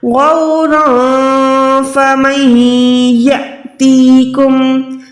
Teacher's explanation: نون ساکن کے بعد یا ہے، یہاں پر گنہ کر کے ادغام کریں، اس کے بعد اس کو لمبا نہ کریں الف کو، فمن یا نہیں ہے، حمزہ کے اوپر دیکھیں سکون ہے یعنی حمزہ ساکن ہے، یہاں پر حمزہ ساکن ہوتا ہے تو ہم نے وہاں پر ہر حال میں جھٹکا دینا ہے۔